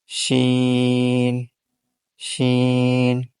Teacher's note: زبان اوپر تالو جو نرم حصہ ہے اس سے مل رہا ہے، تو اس سے حرف شین ادا ہوتا ہے